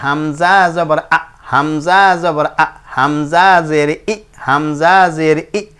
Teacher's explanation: আর আরেকটা জিনিস এখানে দেখেন, এই জিনিসটা কথা মানে বলে শেষ করে দিই, সেটা হলো এটা মাখরজ, হামজা কণ্ঠনালীর শুরু থেকে শক্তভাবে উচ্চারণ করতে হয়।